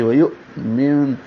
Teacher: حمزہ ساکن ہے، جھٹکے سے پڑھا جائے گا، واو ہونٹوں کی گلائی سے، ویؤمن۔